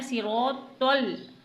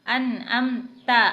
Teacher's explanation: बस यही तो और ता का फ़र्क है, तो को मोटा पढ़ा जाता है जबकि ता को मुंह को खोल कर पढ़ा जाता है, ता अनअमता।